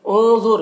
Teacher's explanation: انظر کہ نون میں اخفا ہو رہا ہے، ضا کو پر پڑھنا حروف مستعلیہ میں سے ہے، را کو بھی پر پڑھنا ہے